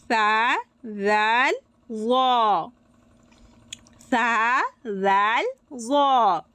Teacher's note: জিহবার আগা সামনের দুই তাতের কিনার সাথে লাগিয়ে উচ্চারিত হবে